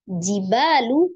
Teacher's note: Lamnya dibaca izhar komari ya, jadi wal. Jibalu, ba ada mad, alif sebelumnya fathah di huruf ba dibaca 2 harakat.